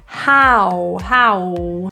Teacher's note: two vowels ending in a really tiny circle of your lips rounding